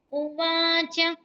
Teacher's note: ఉవాచలో వాకి దీర్ఘము మిగతా రెండు రస్వాలే